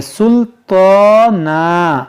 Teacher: طا ہے اور طا پر کھڑا زبر ہے، اس کو کھینچیں گے سلطانا، اور رکیں گے تو اس دو زبر کو الف سے بدل دیں گے، سلطانا۔